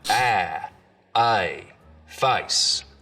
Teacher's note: the diphthong in face starts real low down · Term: face lowering